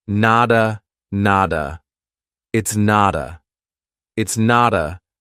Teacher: we have a T between 2 vowels. So a native speaker is going to pronounce that as a soft D and say, nada, nada.